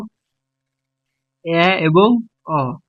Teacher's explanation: ঠোঁটের উন্মুক্তি অনুযায়ী অর্ধবিবৃত এ এবং অ